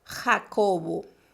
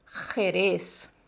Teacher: el sonido velar fuerte, aspirado, o a veces también uvular, es el sonido de la J en castellano